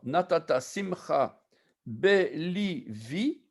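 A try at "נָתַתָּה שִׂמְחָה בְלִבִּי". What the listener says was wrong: Si tu remarques, le bet ne se prononce pas bet, mais v. Natata simcha velibi. Natata simcha velibi. Ça prononce v, pas b. Il y a plusieurs cas comme ça dans la Bible où ça se prononce v et non point b. Normalement, oui, mais l'hébreu, il y a des exceptions parfois.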